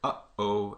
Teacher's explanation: right in between those two sort of syllables uh you get a stop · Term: glottal stop